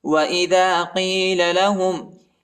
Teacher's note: دال کے بعد الف آیا ہے، اس کو تقریباً 1 سیکنڈ تک کھینچنا ہے، اور یہ بڑا قاف ہے، اس کو موٹا پڑھنا ہے